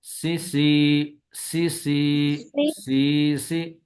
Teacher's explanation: सीन पे सीटी की आवाज